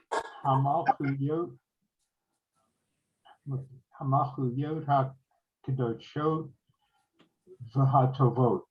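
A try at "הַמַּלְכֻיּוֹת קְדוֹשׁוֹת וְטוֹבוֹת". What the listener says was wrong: So it's Hamalchuyot Kadoshot V'Tovot. You don't have to say the ha because it's a sentence and not a.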